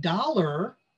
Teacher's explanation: that a r sound at the end because it's in the unstressed syllable becomes an er that same rule applies to o r in the stress syllable · So like in a word like charter, you've got that stressed syllable char and it's pronounced R. But in a word like dollar, that AR sound at the end, because it's in the unstressed syllable, becomes an ER.